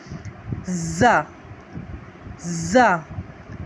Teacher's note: اب یہاں ہم سختی سیٹی کے ساتھ پڑھیں گے۔ ز ز، دونوں دانتوں کو بھینچ کے اور پھر اس کے سختی کے ساتھ آواز نکلے گی۔